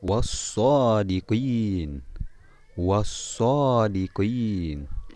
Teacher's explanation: ada huruf alif lam bertemu dengan huruf shod maka lamanya dilebur atau dibaca tidak jelas